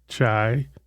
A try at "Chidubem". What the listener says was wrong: Chidubem, B-E-M. You have to pronounce that B.